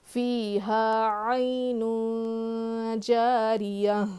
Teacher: تنوین کے بعد حروف اخفا میں سے جیم آیا ہے تو یہاں پہ ہم اخفا کر کے پڑھیں گے